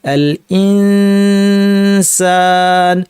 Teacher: সিনের মাখরাজ জিহ্বার শীর্ষ নিচের পাটির দাঁতের গোড়ায় নিয়ে নাক থেকে গুন্না, চিকন গুন্না হবে, দুই পাটির দাঁত লেগে যাবে